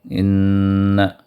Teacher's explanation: 2 حرکت تک نون کو دبا کر اس نون کو پڑھیں گے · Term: نون غنہ